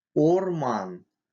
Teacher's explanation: Твердый губной звук. Соответствует русскому О, но произносится более твердо. При произнесении язык отодвигается назад. В отличие от русского, без ударной позиции не переходит звук А, иначе может измениться смысл слова.